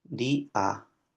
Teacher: de una sílaba que es una vocal eh cerrada tónica y la a es una vocal abierta en este caso atona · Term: yato